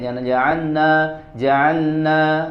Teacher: nun jaanna jaanna ya padahal di situ ada huruf lam sukun yang harus jelas sempurna